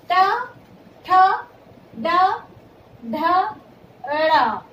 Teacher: जो हमारे मुंह में जीभ के ऊपर का हिस्सा होता है उसे हम मूर्धा कहते हैं। तो जब हम ट वर्ग की ध्वनियों का उच्चारण करते हैं तो इसका उच्चारण मूर्धा, जीभ का अग्रभाग ऊपर मूर्धा को छूता है। · ट वर्ग की जो ध्वनियां होती है ये मूर्धन्य ध्वनियां हैं